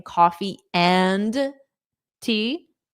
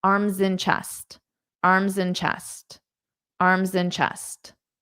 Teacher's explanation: Now this and can just be pronounced as an.